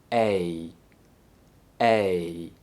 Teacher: it transitions between the E and I sounds. They're linked with the Y sound. To produce this sound, start with your mouth in the E position, with your lips smiling, your mouth partially open, and your tongue forward. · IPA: /eɪ/